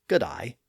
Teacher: You can hear that pronunciation in a broad Australian accent, where day is often pronounced as die, like in the greeting good day, which is rendered in that broad accent as good-eye.